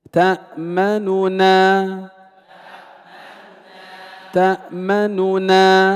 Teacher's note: ننطق بنونين لكن النون الأولى ضمها يسير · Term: الاختلاس